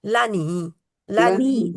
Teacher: लाम के आगे अलिफ नहीं है। लनी लनी नी को खींचना है। ला को नहीं खींचना।